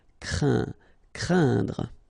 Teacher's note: keep in mind that it goes in your nose, so you don't hear any N when I pronounce it, and then C plus R will produce the sound cr, crain, craindre. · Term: nasal